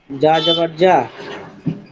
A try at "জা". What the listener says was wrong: জা এই উপরে দিয়া, জা, আবার নিচে দিয়া, জা জা জা, জা জা। যা হবে না, জিবার মধ্যখান থেকে না, যা রা যা।